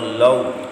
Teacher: حروف لین کو لمبا نہیں کرنا، جھٹکا نہیں دینا، معروف پڑھنا ہے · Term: واو لین